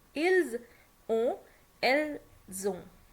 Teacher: As there is s at the end, we don't pronounce s while making it plural, but here there is a vowel after s. So whenever there is s or t at the end, the voice travels if there is a vowel ahead. So s becomes z.